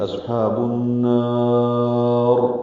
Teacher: نون کو لمبا کریں گے، مد عارض سکون بنائیں گے، را پر پڑھیں گے